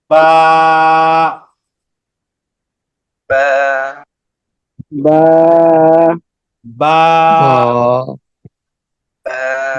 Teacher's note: দুই ঠোঁটের ভিজা অংশ মিলিয়ে বাটা উচ্চারণ করতে হবে, একালিপ টান। আরো যদি সহজ করে বলি, আমরা নর্মালি যেমন থাকি, নর্মালি আমরা কেমন থাকি, এভাবে থাকি।